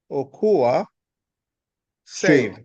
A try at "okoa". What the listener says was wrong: That's perfect.